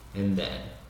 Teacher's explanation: o D no final de and vai sumir